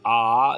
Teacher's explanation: दीर्घ आ को बोलने में पूरा मुंह खुलता है